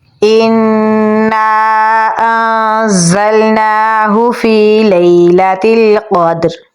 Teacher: حمزہ کو نون کے ساتھ ملائیں گے کیونکہ نون کے اوپر تشدید ہے، تو غنہ بھی کریں گے۔ غنے کی آواز کو ہم ناک میں لے کر جائیں گے۔